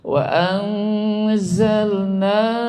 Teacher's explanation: Karena ada mad tabi'i menghadapi alif dalam dua kalimat, maka panjangnya boleh 2, boleh 3, boleh 4, maksimal adalah 5.